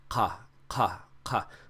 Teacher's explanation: try to make that sound with the back of your tongue rising up towards the back of your throat. Ka, ka, ka, cough.